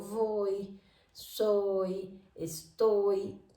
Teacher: cuando yo digo voy, soy, estoy, con la Y sola tiene sonido de vocal